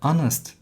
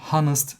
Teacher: ''Honest man'' dürüst adam derken bakın ''onest'' diye okudum. ''Honest'' değil. O yüzden bunu sesli harfle başlıyormuş gibi düşünüp, ''an'' diyorum.